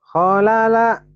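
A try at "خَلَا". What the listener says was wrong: Kholala. Halala bukan holala ya. Halala. Halala.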